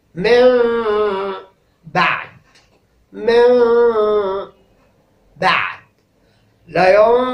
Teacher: في عجالة، الإقلاب هو أن يلتقي مع بعد، أن يأتي بعد النون الساكنة والتنوين حرف الباء، ففي هذه الحالة تنقلب النون الساكنة والتنوين إلى ميم، ونحقق في نطقهما الإخفاء الشفوي، ويكون كما قلت في كلامي إن الإقلاب ينتج عنه إخفاء شفوي يلزمه غنة، فلا يتحقق الإقلاب إلا بهذه الثلاثة: قلب، ثم إخفاء شفوي، ثم غنة.